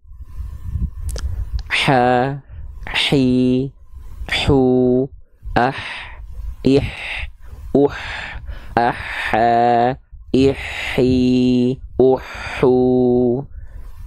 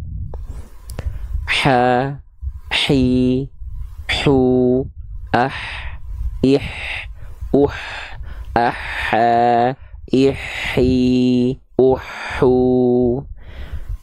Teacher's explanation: H kecil dilafalkan dari tengah tenggorokan, dari tepatnya pada bagian katup epiglotis yang menyempit ke dinding tenggorokan.